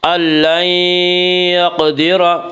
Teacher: لن یقدر میں ادغام مع غنہ ہوگا.